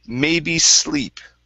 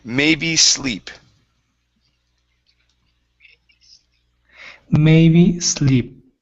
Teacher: So let's use an unvoiced S.